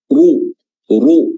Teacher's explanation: huruf ra di sini karena dia berharakat dhammah, maka dia tafkhim atau tebal, ya. Ru, ya, tebal, dan juga dia dhammatain atau tanwin bertemu dengan huruf fa, jadinya adalah ikhfa, Ikhfa itu samar-samar ya, bacaannya ikhfa, kita menyamarkan tanwin yang ada pada run.